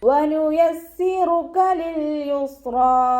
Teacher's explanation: റോ വമ്മയായതുകൊണ്ട് നമ്മൾ ഉയർത്തിയിട്ട് ഉച്ചരിച്ച് കൊടുക്കും